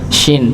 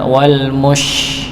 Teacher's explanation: Tengah lidah, dari kalau huruf shin itu tengah lidah, shin. Jadi tengah lidah keangkat, bertemu dengan langit, ya, tidak dirapatkan, agar nafasnya menyebar.